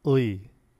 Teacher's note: Korean has a velar glide, which appears only in the diphthong ui. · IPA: [ɰi]